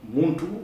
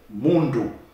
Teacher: the T and the D are the same phoneme, the same sound, in fact. One is deaf and the other is sonorous